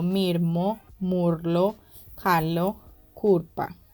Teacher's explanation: transformación de la S por alveolares vibrantes simples como la R o laterales como la L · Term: Rotacismo